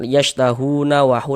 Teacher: Nah, kalau misalkan kita teruskan yashtahuna wahu, langsung kan yashtahuna wahu, langsung tidak berhenti di huruf nun, maka hu ini tetap menjadi mad tabi'i, panjangnya 2 harokat.